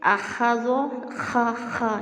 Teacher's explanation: یہ خا کو پر بھی کرنا ہے، موٹا پڑھنا ہے اور اس میں خراش کی آواز آئے گی